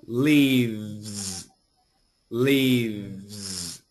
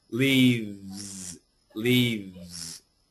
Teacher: a V and an S together give us a Z. So lots of vibration.